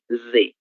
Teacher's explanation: es un sonido voceado, ¿no? Las cuerdas vocales vibran